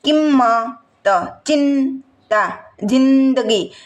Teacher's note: તીવ્ર અનુસ્વાર છે જો તમે એનું ઉચ્ચારણ કરો ભાર દેવો પડે